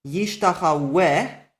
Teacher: in Yishtachaweh the wow is a consonantal wow, and you pronounce it with a vowel